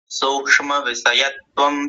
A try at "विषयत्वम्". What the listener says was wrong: विषयत्वम में दंत्य सकार आया था, विषयत्वम ना आकर के।